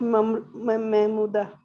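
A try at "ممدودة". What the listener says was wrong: महमूदा तो मेरी चची का नाम है, महमूदा नहीं, ममदूदा, डबल मीम है। कड़ा जबर, उसको अलिफ मकसूरा कहते हैं।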